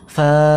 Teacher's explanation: এক আলিফ টান দিয়ে অর্থাৎ এক সেকেন্ডের মত আমরা ফাকে বলব